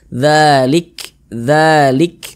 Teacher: maupun yang bertasydid nah kemudian ini huruf Kaf ini kita sukunkan huruf Kaf itu kalau dia sukun ya ketika mengucapkannya itu ada nafas yang mengalir seperti memercik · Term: sifat Hamas